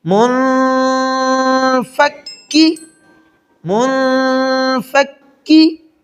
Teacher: کاف کے اوپر شد بھی ہے تو فا اور کاف دونوں کو سختی سے اس کو ملائیں گے